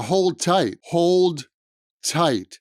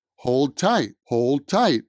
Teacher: the d sound at the end of hold kind of disappears hold tight hold tight it almost sounds like hole tight hold